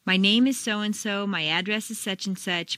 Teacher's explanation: if you stress name it sounds as if you're going to continue with more personal information